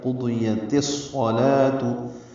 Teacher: ادغام شمسی کیا، تا کو صاد سے ملایا، صاد پر تشدید لائے، صاد پر پڑھیں گے، لام باریک پڑھیں گے، واو نہیں پڑھیں گے۔